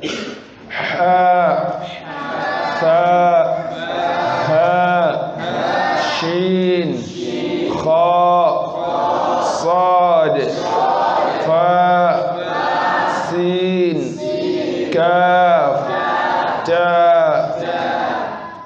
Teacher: ه ش خ ص ف س ك ت هذه حروف الهمس وهي حروف يخرج معه أو معها الهواء عند النطق بها